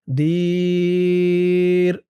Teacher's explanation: দীর এমন উচ্চারণ হবে ৩ আলিফ টান দিয়ে